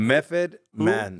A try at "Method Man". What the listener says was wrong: with an F? You're saying Method Man with an F.